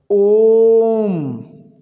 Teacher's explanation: थोड़ा खींचें स्वर को और यह कितनी मात्राओं से उच्चारित होगा तीन मात्राओं में लगने वाले समय के बराबर इसको ओ को हमें टाइम देना पड़ेगा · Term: प्लुत